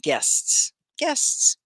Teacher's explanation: you say the s on the end but it's not another syllable